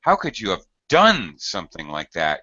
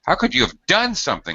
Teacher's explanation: it's really going to Peak on done and then gradually get lower and Pitch toward the end how could you have done something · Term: falling in in intonation